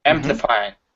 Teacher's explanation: is pronounced amplifying the stress is at the very beginning